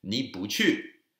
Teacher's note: 不 is actually fourth tone, but if it's 不去, because the 去 is the fourth tone, it becomes second tone